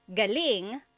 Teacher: if the emphasis is on the second syllable galing that means good or great or excellent